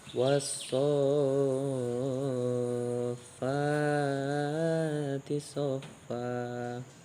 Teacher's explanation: Mad lazim ini harus dibaca panjang sehingga disebut dengan juga mad lazim mutawal.